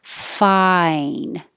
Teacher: And this is I. So your jaw starts lower, ah, and ends with the E. So your tongue has to rise.